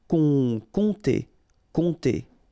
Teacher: you don't pronounce the P here, and then this OM together will produce the nasal on